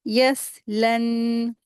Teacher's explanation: लाम को नून में मिला के पढ़ेंगे। लन गुन्ना करेंगे।